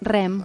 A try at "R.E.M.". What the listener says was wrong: It's REM. It's REM. Not REM. You even roll the R, don't you? REM.